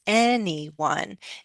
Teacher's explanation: But anyone does happen to have three syllables, anyone. And in those three syllables, we are going to stress the first, right?